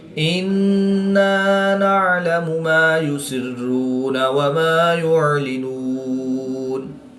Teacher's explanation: نون مشدد میں ہمیشہ غنہ ہوتا ہے تو یہاں پر ہم غنہ آنی کر کے پڑھیں گے